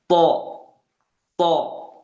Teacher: To ini dia sifatnya kuat, maka jangan sampai ada hams ataupun percikan nafas selayaknya huruf ta